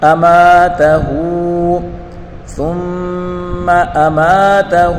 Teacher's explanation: میم الف سے ما یا الف مدہ ہے، اس کو ایک الف کی مقدار کھینچ کر پڑھیں گے